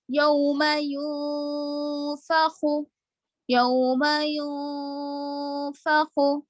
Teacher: اگر آپ یوں فخو پڑھ رہے ایک الف کے برابر نہیں کھینچ رہے لیکن اخفا کر رہے تو بھی غلط ہے. ٹھیک ہے، ایک الف کے برابر ناک میں آواز کو چھپانا ہی چھپانا ہے